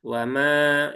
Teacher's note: Kemudian panjangkan dua harakat. Wama ya cukup dua harakat. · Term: panjangkan 2 harokat